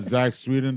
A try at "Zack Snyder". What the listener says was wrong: Zack Sweden? You just mixed the two together? You said Zack Sweden.